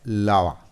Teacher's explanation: We have 2 syllables. The first one is stressed, lava, and the second one is unstressed. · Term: trochaic